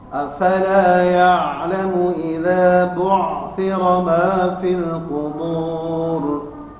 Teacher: Kemudian juga ain yang kedua bu'thira juga sama, rokhawah, mengalir, dan di ujungnya ada tabkhim, yaitu huruf ra.